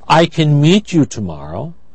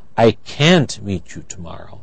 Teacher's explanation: when it's negative it is stressed we hear can't but it when it's positive we don't i · If it's stressed, negative, can't is stressed, so the vowel is not reduced. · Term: stressed form